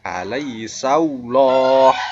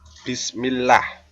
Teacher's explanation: Jadi bukan la, tetapi lo, karena sebelumnya berharokat fathah. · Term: tafkhim